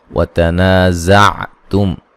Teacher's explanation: زا کو زور سے سیٹی سے ادا کریں گے